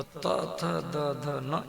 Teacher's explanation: दंत्य वर्ण जो जीभ दांत में टकराएगा, जब जीभ दांत में टकराएगी तो त थ द ध न, ये 5 अक्षर आपके मुख से निकलेगा